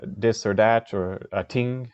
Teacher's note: words that have th, you'll often hear pronounced with a d or a t